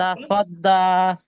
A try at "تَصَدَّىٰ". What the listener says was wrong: এই তো মাশাআল্লাহ এখন দেখেন ভাই আপনারা সবাই যে বললেন তা সদ্দা এটা কেমন জানি একটু পাতলা বেশি হয়ে গেছে তা সদ্দা এরকম তা স স স তা সদ্দা তা সদ্দা